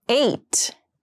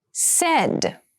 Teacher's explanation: eight has the more closed sound and said has the more open Sound